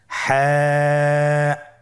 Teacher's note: হা হরফটি উচ্চারিত হবে কণ্ঠনালীর মধ্যখান হতে। গলা চিপে ধরে আপনি উচ্চারণ করুন।